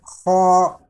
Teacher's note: یہ حلق کے اوپر والے حصے سے ادا ہوتا ہے